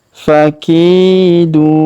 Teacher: Huruf ki kita panjangkan 2 harokat atau kita ayun sekali karena ya sukun di depannya.